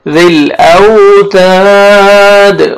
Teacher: ذل اوتاد، واو لین ہے، آگے الف مدہ ہے، ایک الف کے برابر آپ نے تا کو کھینچنا ہے اور تا کو باریک پڑھنا ہے